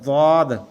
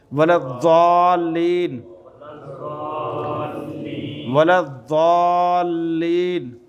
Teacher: زواد زبان کی دائیں یا بائیں کروٹ جہاں سے آپ کو آسان لگے، اوپر والی داڑھوں کی جڑ کے ساتھ لگے تو پھر یہ لفظ ادا ہوتا ہے، زواد۔